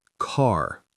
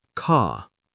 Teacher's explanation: In British RP, ka. The R softens into just lengthening the vowel. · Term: non-rhotic pronunciation